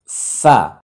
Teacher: 14 number মাখরাজ দাঁতগুলো ঠোটে লেগে যাচ্ছে